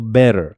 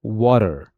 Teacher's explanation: a T between vowels become a soft D sound.